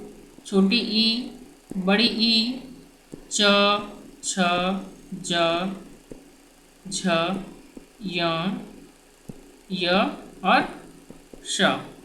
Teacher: जौन सा वर्ण का उच्चारण जीव के अगले अग्रभाग से तालु को छू करके होता है उसे हम लोग तालव्य कहते हैं